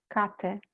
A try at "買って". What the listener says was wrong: Katte. So it's a hard T. Katte.